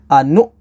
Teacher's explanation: نون حمزہ پیش نو، انو، اب یہاں پر یہ دیکھیں واو شکل حمزہ ہے، تو یہ جو واو ہوتی ہے یہ واو شکل حمزہ ہوتی ہے، اس کے اوپر حمزہ کو پڑھا جاتا ہے، واو کو نہیں پڑھتے، اور یہ حمزہ ساکنہ ہے، اس میں جھٹکا دیں گے، پش کریں گے، انو، اس طریقے سے۔